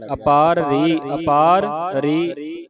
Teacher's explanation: ਪੂਰੇ ਦੋਨੇ ਰਾਰੇ ਉਚਾਰਨ ਕਰਕੇ ਜਾਣੇ ਨੇ